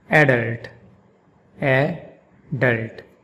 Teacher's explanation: And in American English, it's pronounced adult, adult, with the emphasis on the second syllable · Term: emphasis on the first syllable